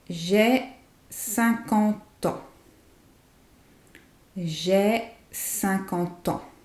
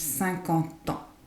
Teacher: 50 ans sounds like one word, like it's all attached.